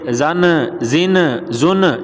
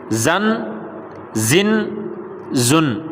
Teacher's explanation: نون جو ساکن ہے اس کو آپ نے قلقلہ نہیں کرنا، اس کو ہلانا نہیں ہے، کیونکہ وہ قلقلے والی نہیں ہے، نہ ہی اس کو حرکت دیں گے یا ہلائیں گے، ایسے نہیں کریں گے۔